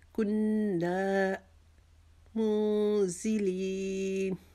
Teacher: اس کو ہم 6 انگلیاں لمبا کریں گے۔ وما کننا منزلین، کننا کو ہم 1 الف کے جتنا پہلے رکیں گے، پھر 1 الف کے جتنا اس کو لمبا کریں گے